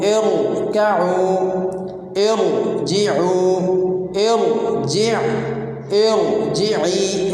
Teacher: اس طرح را ساکن کو پر پڑھیں گے